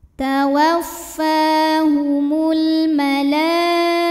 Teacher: Ini satu kata yaitu pada kata al-malaikatu. Maka lam dipanjangkan boleh 4, boleh 5 harokat. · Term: mad wajib muttasil